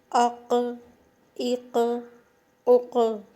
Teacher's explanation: اب جب قاف پر جزم آئے گی تو اس کی آواز پلٹے گی